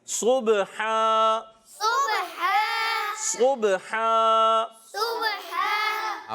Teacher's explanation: صاد کی ادائیگی پیارے بچوں اور مدنی چینل کے ناظرین، صاد حرف مستعلیہ میں سے بھی ہے اور بہت زیادہ پر پڑھے جانے والے حروف میں سے بھی ہے، اس لیے اس کو پر پڑھیں گے. اور با میں قلقلہ، آخر میں دو زبر کی تنوین کو الف سے بدل دیں گے